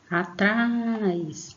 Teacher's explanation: você vai perceber que você põe um pouquinho mais de força na sílaba trás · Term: sílaba tônica